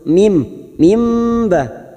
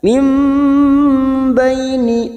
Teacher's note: menukar pada huruf mim mim ba tetapi siap membunyikan huruf ba mim kita dengungkan selama tiga harakat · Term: iqlab